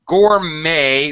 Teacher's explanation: gourmet the T is silent